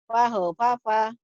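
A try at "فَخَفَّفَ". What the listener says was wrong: kho-nya keluar. Fakhofafa, fakhofafa, iya.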